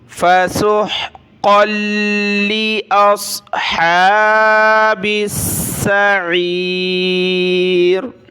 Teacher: ہا کے اوپر کھڑا زبر ہے تو ایک الف کی مقدار اوپر کھینچا